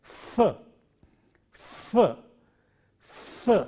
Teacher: Initially it is f, f, f. There is friction coming out between the teeth and the lip.